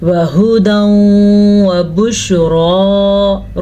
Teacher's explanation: را کو پر پڑھنا ہے